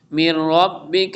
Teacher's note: نون ساکن کے بعد را آ رہا ہے ادغام یرملون ہوگا